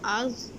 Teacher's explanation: ظا کو ہم موٹا پڑھیں گے لیکن اس کی باؤنسنگ ساؤنڈ نہیں ہوگی۔ حمزہ زبر ظا از، از نہیں پڑھیں گے، از از از، اسی طرح ہم آخر تک پڑھیں گے۔